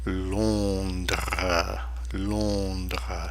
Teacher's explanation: Notice that S at the end of Londres is silent.